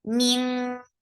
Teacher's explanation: Circle your lips very nicely. Ming, this is ikhfa, which is heavy, and because qaf is among heavy letters, and you are lifting your tongue very nicely